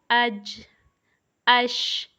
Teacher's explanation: جیم کا مخرج، شین کا مخرج اور یا کا مخرج سیم ہے کہ زبان کا بیچ جب اوپر تالو کے ساتھ لگے تو جیم، شین اور یا ادا ہوتے ہیں، اور ان 2 الفاظ کو، جیم اور شین کو، ہم 5 الف کی مقدار لمبا کریں گے اور یا کو ہم 1 الف کی مقدار لمبا کریں گے۔ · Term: حروف شجریہ